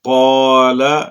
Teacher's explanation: قاف یہ حرف مستعلیہ ہے، وہ حروف جو ہر حالت میں پر پڑے جاتے ہیں۔ یہ دونوں حروف جو ہیں یہ زبان کی جڑ سے ادا ہوتے ہیں، لیکن قاف زبان کی جڑ اور تالو کے نرم حصہ سے ادا ہوتا ہے، جبکہ کاف یہ زبان کی جڑ اور تالو کے سخت حصہ سے ادا ہوتا ہے۔